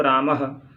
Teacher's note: विसर्ग का उच्चारण हा किया जाता है